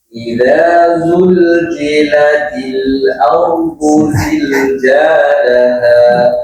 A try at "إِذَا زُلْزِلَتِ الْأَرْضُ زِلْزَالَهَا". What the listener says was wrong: Zai pertamanya jim. Zai keduanya tadi dibacanya jim. Tadi idza zul, tadinya yang keduanya jadi jim. Idza zulzilatil, itu jadi jim.